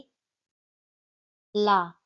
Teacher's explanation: पार्शिक ध्वनि क्या होती है? ऐसी ध्वनि जो उच्चारण करते समय जीभ के किनारों से हवा के निकलने के कारण बनती है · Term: पार्श्विक ध्वनि